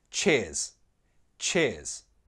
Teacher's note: Pronunciation, it's flat, one syllable, cheers. Cheers.